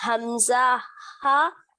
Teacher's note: جی حمزہ ہا ادا ہوتے ہیں اقصاء الحلق سے